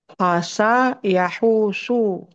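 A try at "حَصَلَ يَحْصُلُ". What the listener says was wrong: bukan, ada lam di akhir. nah, hasala yahsulu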